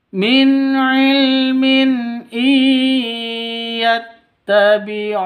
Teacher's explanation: I non mati bertemu dengan ya. Cara bacanya masuk ke ya. Disertai dengung dua ketukan. Idgham bigun bighunah. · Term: idgham bighunah, Idgham bigunnah